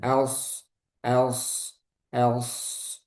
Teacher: Kurang tebal. Pangkal lidahnya naikkan.